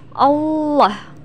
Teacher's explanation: ketika kita melafalkan huruf lam pada lafdzul jalalah atau lafaz Allah maka huruf lam harus terdengar menebal dengan cara menutup bagian lisan ke langit-langit